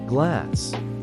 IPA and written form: ɡlæs (Glass)